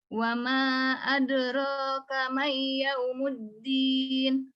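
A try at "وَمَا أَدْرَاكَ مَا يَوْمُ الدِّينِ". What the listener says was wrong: Ma bukan mai, ma yaumiddin.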